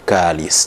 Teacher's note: they would probably have difficulty pronouncing h, and then h will be systematically replaced by k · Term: variation in phonology